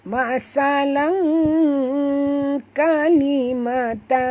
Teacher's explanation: dia bukan bunyi lan tapi bunyi dia lang, L-A-N-G, lang. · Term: ikhfa